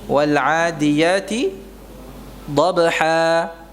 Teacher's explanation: yang asalnya dhabhan dibaca panjang, dhabha 2 harakat, itu namanya mad iwad.